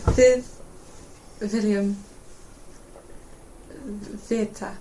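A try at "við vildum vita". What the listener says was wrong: the pronunciation was perfect.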